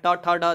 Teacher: ये भी आपको उच्चारण जो होते हैं ये मूर्धा और जीभ से होते हैं, जिसे मूर्धन्य ध्वनियाँ बोला जाता है